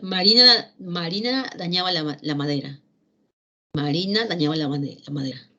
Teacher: al finalizar la oración, la inflexión de voz, los cambios tonales, las frecuencias, tienden a sufrir un descenso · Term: inflexión final